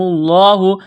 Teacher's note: لفظ اللہ کے نام سے پہلے پیش ہے تو لفظ اللہ کے نام کو موٹا کرنا ہے۔ جب یہاں پر وقف کریں گے تو دو زبر کی تنوین کو الف سے تبدیل کریں گے۔